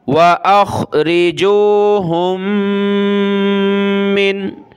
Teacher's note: میم کے اوپر یہ تشدید ہے تو ہم نے ناک میں آواز پیدا کرنی ہے